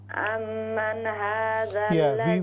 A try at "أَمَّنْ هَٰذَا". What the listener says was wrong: We do not bounce noon at the start. We don't say ammanna.